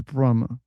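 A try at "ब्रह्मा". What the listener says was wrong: Brahma. Not Brahma. No, Brahma. I is not there.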